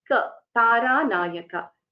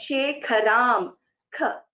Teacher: So if you look at the example, Taranayaka Shekharam, so the Taranayaka, Ka in Taranayaka, first Ka is Alpa Prana. Ka, Taranayaka. The second Ka, Shekharam, Ka, that is a Mahaprana.